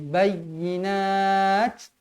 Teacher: Kalau berhenti, pastikan huruf ta ni dihamaskan, dianginkan dia.